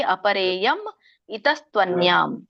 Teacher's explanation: ಮಧ್ಯದಲ್ಲಿರೋ ಮೀ ಏನಿದೆಯಲ್ಲ split ಆಗುತ್ತೆ. Split ಆಗಿ ಮ ಅನ್ನುವಂಥ ವ್ಯಂಜನ ಹಿಂದಿನ ಪದಕ್ಕೆ ಹೋಗುತ್ತೆ, ಅದ್ರ ಜೊತೆ ಇರುವಂತಹ ಸ್ವರ ಮುಂದಿನ ಪದಕ್ಕೆ ಬರುತ್ತೆ